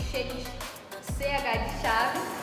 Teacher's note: quando a língua toca ou chega perto do palato, que seria o céu da boca. Por exemplo, em CH de chave, a língua toca a parte de trás dos dentes superiores e a região do palato, o céu da boca. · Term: palatais